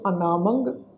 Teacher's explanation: ਮੰਮੇ ਉੱਤੇ ਟਿੱਪੀ ਦੀ ਮਾਤਰਾ ਨਾਸਿਕ ਉਚਾਰਨ ਕਰਾਂਗੇ